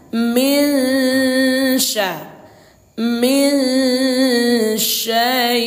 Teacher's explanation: Yang disamarkan ini suara nun sukun ini atau nun mati ini kita samarkan ke huruf shin disertai dengan dengung 2 harokat. Jadi cara membacanya min syai, min syai. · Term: ikhfa